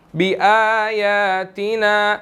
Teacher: अब नून के बाद जो है वो अलिफ भी है, आगे अलिफ मद्दा है, तो हमने इसको 1 सेकंड ज़रूर लंबा करना है